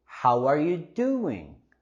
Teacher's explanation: We also have the linking sound with the W, how are.